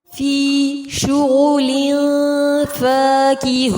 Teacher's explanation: تنوین کے بعد فا ہے، اخفا کیا جائے گا اور مد عارض کے ساتھ وقف کیا جائے گا